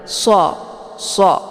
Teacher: ini SH ya dibaca tebal ya dia sifatnya adalah saofir maka saofir itu ada bunyi suara siul ya SH SH jadi desis anginnya itu lebih jelas